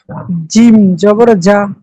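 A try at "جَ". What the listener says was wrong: জিমের উচ্চারণটা কেমন হবে? জি শক্ত হবে, আরেকটু শক্ত হবে।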